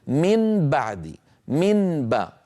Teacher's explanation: الانتقال من حرف لساني فيه غنة إلى باء مجهورة من الشفتين ثقيل